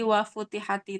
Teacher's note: membaca wa futihati itu dengan meringankan huruf ta, tidak dengan tasdid. Jadi wa futihati, tapi selain yang 3 dari Kufah ini mentasdidkan huruf ta tersebut.